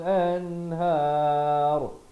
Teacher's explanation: Dan ra-nya dibacakan dengan tebal di akhir